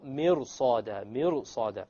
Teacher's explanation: the ra, when you make it heavy, it makes it easier to pronounce the sad